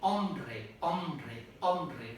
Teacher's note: a Sound if you Start saying om omre om very Fast the B appears automatic Because of coarticulation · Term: epenthesis